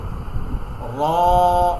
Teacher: মোটা করে জিহ্বাটাকে এরকম বাটির মতো, এরকম বাটির মতো খালি করে একটা সাউন্ড হবে, র, মোটা করে।